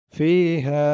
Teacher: ফি জেরের পরে ইয়া সাকিন এক আলিফ টান, হা জবরের পরে খালি আলিফ এক আলিফ টান